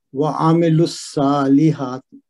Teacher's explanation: صاد ویسے موٹا پڑا جاتا ہے اور حروف مستعلیہ میں سے ہے اور اس پہ کھڑی زبر ہے تو وہ بدل الف مد ہے، اس کو 2 حرکت لمبا کریں گے.